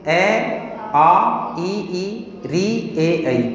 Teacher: गोल हो जाएंगे वे वृत्ताकार, 4 स्वर होंगे ऊ ओ औ। अवृत्ताकार, ओठ गोल नहीं होंगे